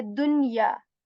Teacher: We are not assimilating the sound of da here with yeah here, and we're not skipping the sound of noon here